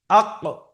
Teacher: তো কফের উচ্চারণ হয় এই জিভের গোড়াটা উপরের তালুতে লেগে উচ্চারণ হবে। যেমন আক, কফটাকে সাকিন করে শুরুতে হামজা নিয়ে এসে উচ্চারণ করেন আক।